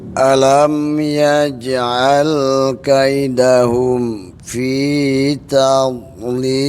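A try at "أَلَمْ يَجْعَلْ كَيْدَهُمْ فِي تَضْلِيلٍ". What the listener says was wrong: Coba Pak, dotnya agak disempurnakan lagi. Tab, ya, agak lidahnya dinaikin semuanya. Emang ini huruf yang paling susah ini. Tab.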